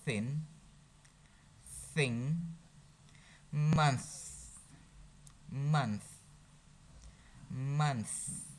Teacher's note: Dental, it is teeth. You could make sound when the tongue in between upper teeth and lower teeth. So it is your tongue, this is your upper teeth, your lower teeth.